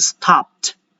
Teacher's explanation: because there is a PED, so I have to still pronounce the D sound in the end, but instead of D, it will now sound as a T.